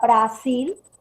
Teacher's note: al pronunciar suena la mayor fuerza de voz en la última